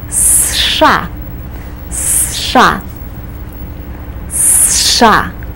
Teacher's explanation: we pronounce it as one syllable you start with a strong s sound then you do the SH sound